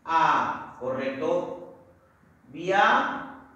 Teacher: ¿Dónde está la mayor fuerza de voz? En sión, por lo tanto, lleva tilde, es una palabra aguda.